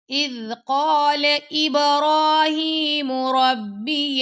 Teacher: إذ ذال کو نرمی سے پڑھیں گے، قاف کو موٹا، با پہ کلکلا کریں گے